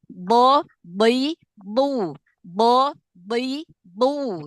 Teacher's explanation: Bot walaupun kasroh, dia tingkatan tafhim yang terakhir, tapi jangan tipis, tetap tebal, tetap diangkat pangkal lidahnya. Apalagi bot itu punya sifat itbak, ya, lebih gendut suaranya.